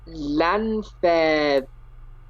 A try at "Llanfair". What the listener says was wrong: Double L. Double L is pronounced as ch.